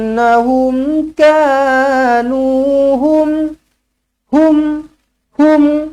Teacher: mim matihar syafawi matikan dengan jelas dan terang